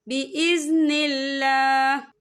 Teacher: यहाँ पर अल्लाह का नाम बारीक पढ़ा जाएगा, क्योंकि अल्लाह के नाम से पहले ज़ेर है